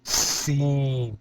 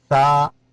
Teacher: سیٹی کی آواز آ جائے گی سین میں، ثا بالکل نرم، ثا زبان کی نوک اوپر والے دانتوں کے سرے کے ساتھ، ثا، سین، ثا، جیم، ثا، جیم، تا، ہا۔